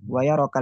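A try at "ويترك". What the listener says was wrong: bukan apa wayatruka ada taknya tuh.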